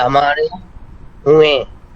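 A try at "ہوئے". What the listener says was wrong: हुए না, আপনার নাকের মধ্যে নেন কেন? এখানে তো কোনো নুন নাই। হুয়ে হুয়ে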